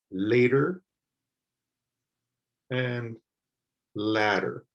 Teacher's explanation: a single t this one ladder has a double t so you'll hear that the t sound sounds like a d in both of them